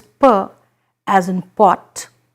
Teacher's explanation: it is a bilabial it's produced when the lips come together